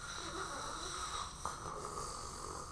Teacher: What I mean is, if you touch your throat, you will feel a bit of vibration. The R sound is a continuous sound. You can hear the air going out of my throat and my mouth continuously.